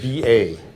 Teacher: ba said very flat is the number three